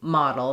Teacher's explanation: in a word like model that we were talking about earlier, the D is a flap